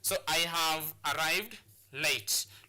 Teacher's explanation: So the words that need to be stressed in this sentence will be arrived and late.